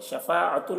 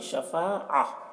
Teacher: جب گول تا پر وقف کرنا ہو تو وہ ہائے ساکنہ بن جاتی. تو شفاعہ پڑھیں گے, شفاعتن نہیں, شفاعہ ایسے پڑھیں گے.